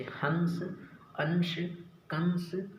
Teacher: अनुस्वार का उच्चारण करते समय आवाज नाक से निकलती है, जैसे हंस, अंश, कंस आदि।